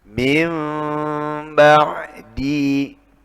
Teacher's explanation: yang lebih sempurna harus disertai gunnah dan juga ma'al ikhfa, disamarkan. Min ba'di ambihum, sedikit membuka, sedikit dok, bukan bukan juga, tapi ada rongga dalam rangka menahan. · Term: iqlab